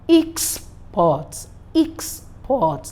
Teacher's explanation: The EX will be stressed, while PORT will be unstressed. So we'll have export.